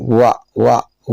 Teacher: वा का उच्चारण दांत और होठ दोनों आपस में मिलकर के कर रहे हैं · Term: दंतोष्टम